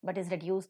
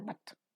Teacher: but is reduced to its weak central vowel